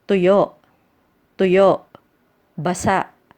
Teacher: the last or end syllables of these two words are stressed as in tuyo, basa